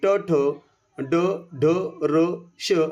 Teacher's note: हे सर्व मूर्धन्य आहेत कारण का हे जिभेचा शेंडा टावळीच्या कठीण भागाला म्हणजे मूर्धेला स्पर्श करतो